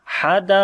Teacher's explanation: Qaf we read in heavy sound